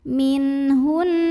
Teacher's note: nun sukun yang ketemu sama huruf tenggorokan halqi yaitu H maka nun sukun kita bunyikan dengan izhar jelas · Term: izhar halqi